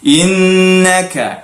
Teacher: nun bertasydid, jadi kena gunnahkan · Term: wajibal gunnah